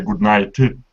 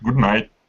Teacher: the d is fusing with that n which is why it's good night uh the other is that